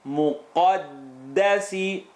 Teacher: Muqaddasi, qaf heavy, dal light. Muqaddasi, behind the uvula, behind the teeth.